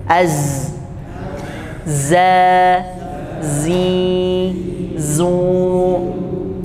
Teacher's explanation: Za kita sukunkan dulu Az Za Z nah ini saofir ya Jadi ada bunyi tipis di ujung sini Z ya ada sedikit hembusan angin ya seperti es gitu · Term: Zai